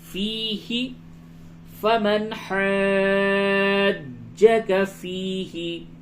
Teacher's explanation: فیہ یا مدہ ہے، اسے تھوڑا سا کھینچیے